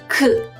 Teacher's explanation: Votre langue doit toucher la partie arrière de votre palais et vous expirez l'air autant que vous le pouvez en ouvrant vos cordes vocales et en détachant votre langue. Vous devez fermer la voix vers votre cavité nasale et vous ne faites pas vibrer vos cordes vocales